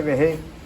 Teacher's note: los naturales del pueblo, nunca utilizamos la consonante R